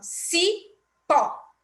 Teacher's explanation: pó é a sílaba mais forte, a sílaba tônica desta palavra